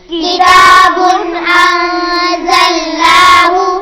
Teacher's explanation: کتاب تنوین کے بعد حمزہ آ رہا ہے، یہاں پر اظہار ہوگا، انزلناہ، یہاں نون پر اخفا ہوگا، آواز ناک میں جائے گی۔